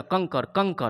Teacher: अंग बोलने पर जो है क्या होता है कि नाक से श्वास निकलता है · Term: अनुस्वार